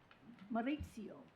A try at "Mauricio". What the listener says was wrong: It's Mauricio. There's no other I before the O.